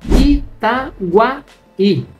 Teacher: Itaguaí, a separação silábica entre o A e o I, é o hiato. Então, todas as palavras que terminam em I e em U, seguidas ou não de S, que são precedidas por hiato, elas são acentuadas.